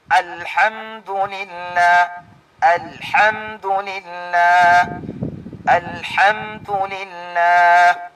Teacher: Ang makhraj, ang lugar kung saan maglabas ang alif ay sa adna al-halq. Sa dulo ng ating lalamunan sa may bandang itaas.